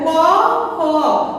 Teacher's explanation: জিহ্বের মূল বা গোড়ালি উঁচু করে কোমল তালুর সঙ্গে স্পর্শ করে যে ধ্বনি উচ্চারিত হচ্ছে তাকে আমরা বলবো কণ্ঠ বা জিহ্বামূলীয় ধ্বনি।